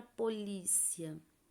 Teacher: o som mais forte vai ser o da vogal e semivogal vai ter um som mais brando mais leve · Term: ditongo crescente